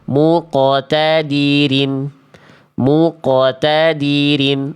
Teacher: pembacaan itu salah karena suara pantulan di bagian akhir terdengar teredam